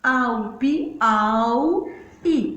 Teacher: O au, eu falo duas vogais numa só abertura de boca. Então aqui eu tenho um ditongo.